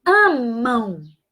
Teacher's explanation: Ó, o último som é U. Amam. Né? O último som é U. Representa o U. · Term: semivogal